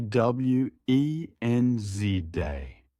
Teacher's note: The D is silent.